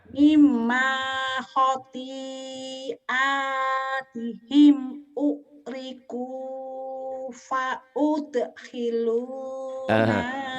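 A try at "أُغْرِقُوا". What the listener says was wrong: Ukriku, bukan ukriku, ugriku, Jawanya kita. Kalau angin mati sama G mati pasti ke K. Jangan. G aja dia dulu. Ugriku ya, ayo Bu.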